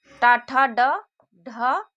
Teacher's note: ट का उच्चारण स्थान दंत से नहीं बल्कि मूर्धा से है